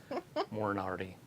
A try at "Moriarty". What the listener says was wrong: It's Moriarty. Not moron. There's no N. Moriarty.